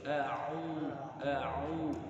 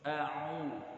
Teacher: Nah, di situ harus jelas jauhnya, yaitu kalau waw sukun yang sebelumnya dhammah itu jauhnya dengan memoncongkan dua bibir, a'u, supaya huruf yang kita ucapkan tidak melewati khaysyum atau rongga hidung.